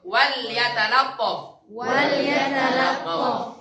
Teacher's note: Hati-hati yang lam kedua tebal.